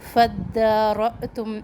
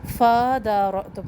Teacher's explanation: فَدَّارَأْتُمْ اب فا کو ہم نے فوراً دال تشدید سے ملانا ہے، فَدَارَأْتُمْ نہیں پڑھنا.